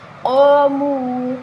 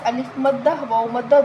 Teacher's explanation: قاموا، قاف موٹی پڑھیں گے، حروف مستعلیہ ہے، الف مدہ، واو مدہ، دونوں ایک ایک الف کے برابر لمبا کریں گے